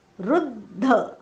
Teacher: दचा उच्चार प्रथम होतो म्हणून दचा आघात दिलेला आहे.